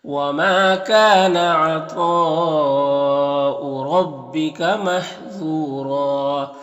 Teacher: را کو پر زبر، را کو پر پڑھیں گے، ذو حروف مستعلیہ میں سے پر پڑھیں گے، یہاں پر واو مدہ ہے، اور یہاں پر دو زبر کو وقف کریں گے تو ایک زبر کے ساتھ الف پڑھیں گے اور را کو پر پڑھیں گے